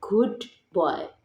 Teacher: The d becomes more like b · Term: regressive assimilation